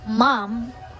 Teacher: As in mom or m, the letter M, this is a voice bilabial nasal, means that it is produced by closing the lips and allowing air to flow through the nose